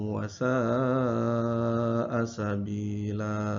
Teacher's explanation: mad tabi'i bertemu dengan hamzah dalam satu kalimat, maka dibaca mad wajib muttasil, itu dibaca dengan panjang 5 harokat. Kemudian di akhir kata ada kata sabila, jadi dibaca mad iwad, berarti 2 harokat.